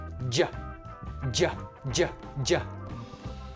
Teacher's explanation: Your tongue is doing all kinds of fun stuff here. It's touching the back of your teeth. J, j. And it's kind of jumping off of your hard palate